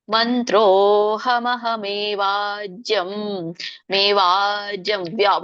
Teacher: ಮೇವಾಜ್ಯಂ ವಾ ಎಳಿತಾ ಇದ್ದೇನೆ, ಯಾಕೆ ಹೇಳಿದ್ರೆ ಅವಗ್ರಹ ಇದೆ